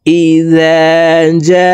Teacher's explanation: শুদ্ধ উচ্চারণ হয়ে যাবে এই জিমকে চার আলিফ টানে পড়তে হবে মদের হরফের উপরে মোটা চিহ্ন বামে হামজা মধ্যে মুতাসিল চার আলিফ টানিয়া পড়িতে হয়